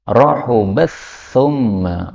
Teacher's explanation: ta dengan tha ini makhrajnya berdekatan sehingga boleh idgham.